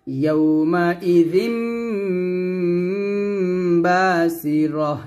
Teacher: দুই ঠোঁট মিলিয়ে গুণ করবেন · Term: ইকলাব